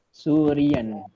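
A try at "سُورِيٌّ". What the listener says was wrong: Surian. Barakallahu fiik.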